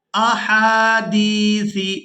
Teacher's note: دال کو بھی ہم نے یائے مدہ کی وجہ سے کھینچ کر ادا کرنا ہے